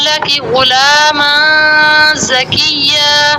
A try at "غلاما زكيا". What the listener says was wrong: ماں بیٹا یہ لمبا نہیں کرنا آپ نے. فوراً جوائننگ دینی. جوائننگ ڈھیلی نہیں ہونی چاہیے. غلاما غلاما اس کو نہیں کچھ بھی کرنا. میم کو آپ نے فوراً جوائننگ دینی. غلاما غلاما یہ غلط آئے گی. غلاما زکیہ زکی تھوڑا سا آواز کو اٹھاتے ہیں یہاں پہ جب تشدید آتی اور واؤ پہ. زکیہ بس اس سے زیادہ نہیں اس کو کھینچ سکتے آپ. سیٹی واضح نہیں ہے.